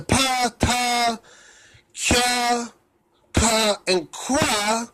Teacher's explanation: what happened is that the plain voiceless stops, the pa, ta, cha, ka, and qua became fricatives. In other words, that they are fa, sa, etc., cha for the dorsals.